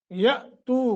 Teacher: यअतू का हमजा साकिन है, झटका देकर पढ़ेंगे